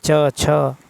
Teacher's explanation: जिन वर्णों का उच्चारण तालु और जीवा के स्पर्श से होता है। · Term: तालव्य